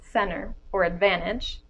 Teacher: the second grouping of words where the T is optionally dropped have the drop T after n